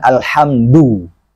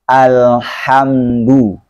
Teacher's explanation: Dalnya pengucapan Al-Quran itu lembut. Tidak kasar, juga tidak dibaca tebal. Bukan alhamdu.